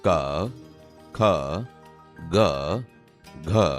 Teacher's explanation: તે ગળામાંથી બોલાય છે, તેથી આ કંઠ્ય વ્યંજન છે.